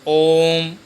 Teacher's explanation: ओम, यानी ओ पे, ओ के उच्चारण में हमें 3 मात्रा का समय लेना है और व्यंजन आधी मात्रा का समय लेता है, इसलिए हम इसको बोलेंगे ओम। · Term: प्लुत